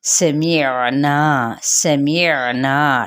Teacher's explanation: وَيَقُولُونَ، واو ہونٹوں کی نا تمام گلائی سے، قو اور لو پہ واو مدہ، سمعنا، سمعنا، ٹھیک ہے، نا ناک پہ آواز نہیں نکالنی، نا الف مدہ ہے جوف دہن سے آواز نکالنی ہے